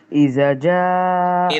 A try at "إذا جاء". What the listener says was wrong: इदा जा, देखिए दोनों की आवाज एक नहीं है. एक दाल की आवाज, एक जा की. इजा जा नहीं. इदा जा नसरुल्लाहि वल फतह.